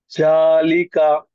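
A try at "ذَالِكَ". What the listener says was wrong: జా కాదు, దాలిక. దాలిక.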